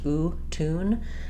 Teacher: I'm not saying tune in American English. There's no y sound in it. It's just oo, tune. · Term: oo vowel